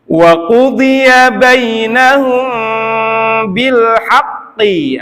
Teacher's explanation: ada mim ketemu ba untuk ikhfa syafawinya dengungkan